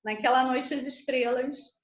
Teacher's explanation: você quase não ouve o é, né? De noite aqui. Quando eu falo, você só ouve o a. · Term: emenda